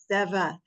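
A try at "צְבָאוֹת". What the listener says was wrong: It's like pizza. It's like the Z in pizza. So it's not like the Z in zebra.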